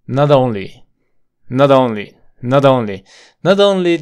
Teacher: lo vas a conectar esa t con una d rápida